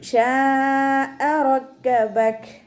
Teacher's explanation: മദ് വാജിബ് മുത്തസിൽ 4 or 5 count നിർബന്ധമായിട്ട് നീട്ടിക്കൊടുക്കുക